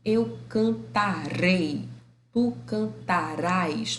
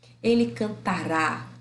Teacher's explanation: Olha onde está a sílaba tônica. Está no rá. · Quando é o futuro do presente, esse rá e esse ré vai ser tônico.